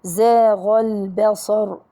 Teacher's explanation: زاغ طبعا مد طبيعي والغين حرف مفخم. زاغ البصر، الباء مرققة الصاد مفخمة